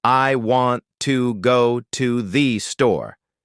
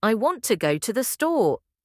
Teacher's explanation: The words want, go, and store are stressed. They are the important words